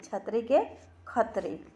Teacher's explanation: छ कर उच्चारण ख चाहे छ होवेला